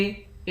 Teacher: نون مشدد ہے، نون مشدد پر غنہ کرتے ہیں، یہاں غنہ ہوگا۔